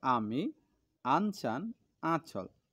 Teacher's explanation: আমরা আ যখন বলো, জিভের মাঝখান অংশটা দেখবে উঁচু হয়ে যায়। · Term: আ স্বরধ্বনি